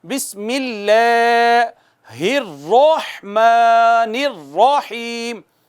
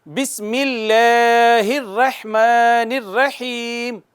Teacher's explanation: تفخیم مثال کے طور پر ہم کہتے ہیں را پر زبر آئے گی تو را کو موٹا پڑھنا ہے, جیسے بسم اللہ الرحمن الرحیم, را پر زبر ہے, موٹی پڑھی جائے گی, مفخم پڑھی جائے گی